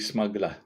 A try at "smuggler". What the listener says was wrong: It's the way you say smuggler. You know, don't don't pronounce the last R.